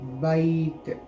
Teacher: जब हम इस ता पर वक्फ करना है तो इसको साकिन में बदलेंगे बैत। बा या साकिन से पहले ज़बर आए तो इसको यालीन कहते हैं, इसको नरम आवाज़ से जल्दी पढ़ना है